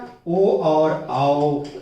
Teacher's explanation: कंठोष्ठ मतलब कंठ और ओठ दोनों से इनका उच्चारण होता है